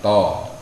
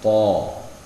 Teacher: Yang membedakannya pangkal lidahnya enggak, kalau dia ta itu istifal, datar, kalau po isti'la, naik pangkal lidahnya.